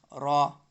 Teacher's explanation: اس را کو تھوڑا موٹا پڑھنا یعنی منہ بھر کو پڑھنا